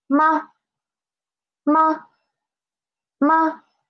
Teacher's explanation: It is a neutral tone. Neutral tone. So we should read it quick and soft, right? Quick and soft.